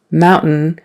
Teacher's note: mountain is where your tongue goes up but really no sound kind of comes out